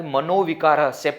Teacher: Visarga is changing to U actually, but it becomes O. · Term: ubhaya sandhi